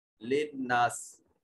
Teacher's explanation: للناس، نون مشدد ہے، غنہ واجب ہوگا